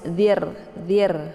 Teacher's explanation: Ra-nya dibaca tipis, zir ya, mulutnya terbuka lebar ya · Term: tarki'